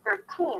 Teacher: Because in the first word, we have 13. It's the strong aspirated T because it's at the beginning of the stressed syllable.